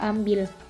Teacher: direalisasikan sebagai bunyi I besar apabila berada pada silabel tertutup atau silabel berkoda